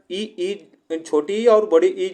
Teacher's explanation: ये हमारी तालु से उच्चारण होती है